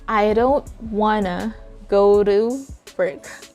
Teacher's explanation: said that you have to drop the letter t sometimes and instead of saying want to i've just said wanna